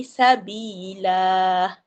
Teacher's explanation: Jadi kita ganti kepada satu a dan kita panjangkan dua harakat. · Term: Mad Iwat